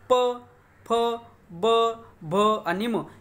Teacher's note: आता उ उ याच्यामध्ये पहा प फ ब भ म याचा उच्चार करते वेळेस पहा आपले जे का ओठ आहेत हे ओठ एकमेकाला लागतात म्हणजे आपल्या ओठाचा स्पर्श होतो. करून पहा उच्चार प फ ब भ आणि म, याचं म्हणजे आपली जे काय ओठ आहेत हे एकमेकाला भिडल्याशिवाय याचा आपल्या तोंडातून उच्चार निघत नाही.